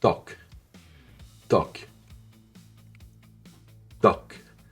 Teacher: Aucun souffle, une tension dans la gorge, un blocage puis relâchement brusque et sec. Même énergie que Mais produit à l'avant de la bouche, juste derrière les dents. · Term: consonne tendue